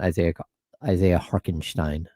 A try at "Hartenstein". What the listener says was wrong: Is that how you pronounce that? No chance. No way is it Harkenstein. No way. I don't think there's a K. There's no chance there's a K sound in there.